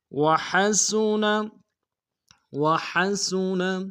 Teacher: سین کی سیٹی باریک ہوگی